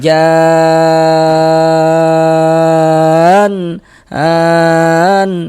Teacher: panjangnya mad lazim kilmi mutsaqqal itu dibaca dengan panjang enam harakat. Ah, kita panjangkan enam harakat baru ujungnya itu ujungnya itu dikasih nabr.